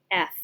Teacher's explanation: it's unvoiced continuous and it's a consonant